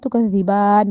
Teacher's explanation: با پہ کھڑی زبر ہے تو ہم نے اس کو لمبا کیا ہے